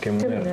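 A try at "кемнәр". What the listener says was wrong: Вы помните, да, что раз на «м» заканчивается, уже все, уже «л» не работает. Поэтому кемнер.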